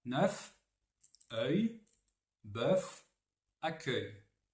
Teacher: Donc c'est un E bien ouvert, E, proche finalement du A